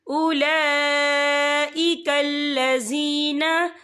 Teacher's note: ये मद जो है मद मुत्तसिल है, इसकी मिकदार 4 अदद के बराबर है, तो हम इसे 4 अदद के बराबर खींच के पढ़ेंगे।